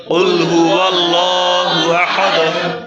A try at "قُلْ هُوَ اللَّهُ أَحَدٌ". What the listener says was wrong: ওয়াল এটা মনে রাখতে হবে আল যেন না হয় হ্যাঁ আরেকবার ওয়াল ওয়াল ওয়াল্লাহু জি